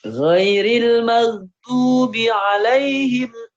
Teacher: Kayaknya tadi kagok bi-nya jadi panjang ya. Bi-nya pendek.